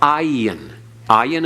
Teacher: It's just a constricting of the throat that's barely audible.